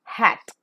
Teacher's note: because the vocal cords are held wide apart obviously it's a voiceless sound · the air from the lungs escapes through a narrow glottis which is between the two vocal cords with an audible friction · So the three-term label of as in H-A-T, hat is voiceless because the vocal cords do not vibrate, glottal because it is coming out from the glottis region straight away, and fricative because the air that is coming out from this glottis has got an audible friction.